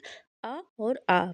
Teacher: केवल आप यहाँ देखेंगे कि जो आपका एक कंठ है, यहीं पर केवल कंपन हो रहा है, और बाकी कहीं भी जो हमारी मुख से जो हवा निकल रही है उच्चारण करते समय, कहीं भी क्या हो रही, हमारे मुंह में कहीं भी स्पर्श नहीं हो रहा है। ना तो तालु, ना ही ओठ, ना ही दाँत